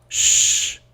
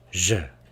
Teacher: So we again see these are very close to each other. The only difference is the voicing.